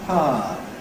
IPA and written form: ˈpaə (power)